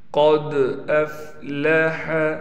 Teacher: قاف کو ہم نے موٹا کر کے پڑھنا ہے اور دال پر قلقلہ کریں گے۔ قلقلہ کے معنی ہے آواز کو ہلانا۔